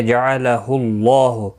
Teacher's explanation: اللہ کا لام پیش کی وجہ سے پر پڑا جائے گا